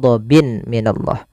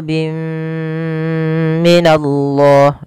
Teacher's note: tanwinnya dimasukkan itu yang kita namakan dengan Idam bunna disertai dengan gunah masuk ke rongga hidung kita